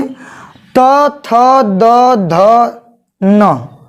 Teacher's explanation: आप बोल के देखिए, त बोलेंगे तो त बोलने पे जीभ दांत को टच करती है, बिना दांत को टच करे हुए त आप नहीं बोल सकते हैं। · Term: दंत्य वर्ण